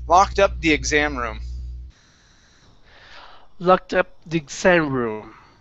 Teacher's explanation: on exam, we're stressing the end of the word.